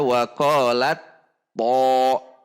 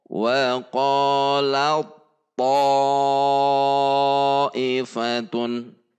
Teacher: Huruf ta sukunnya benar-benar dilebur atau idgham kamil sempurna